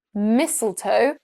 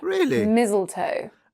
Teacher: I pronounce this word with an unvoiced s sound, mistletoe.